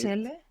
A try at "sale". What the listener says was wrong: Again, you're making some Turkish vowel harmony here, huh? Salir, salir, sale. So that sile you put before is because it just sounds better. The mind has some kind of desire for this vowel harmony.